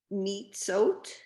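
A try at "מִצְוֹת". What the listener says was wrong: That's the mitzvot again with the vav. Yeah, mitzvot.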